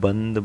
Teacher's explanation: इसमें नाक से आवाज़ ज़्यादा आती है जब आप बंद बोलते हैं, ठीक है, बंद नाक से आवाज़ आ रही है, तो ये यहाँ पर बिंदु लगेगा। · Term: अनुस्वार